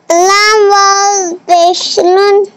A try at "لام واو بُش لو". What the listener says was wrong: نون نہیں لو ایک پیش ہے لام واو بش لو